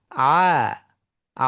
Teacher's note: প্রথম অংশটা চাপের হবে কিন্তু শেষের অংশটা স্বাভাবিক থাকবে, চাপ ছাড়া।